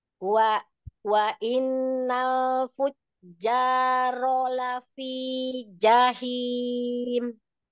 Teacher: Lam itu nempelnya luas di depan ini ya, ujung lidah yang meluas. Kemudian dorongnya ke depan supaya nggak tebal, tipis ya. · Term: Lam tipis